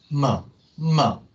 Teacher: 그러니까 막았다가 이걸 터트리면서 코로 내보내는 소리예요. 결국 여기를 막았다가 터트리면서 그 순간에 얘가 쑥 코로 가는 거죠.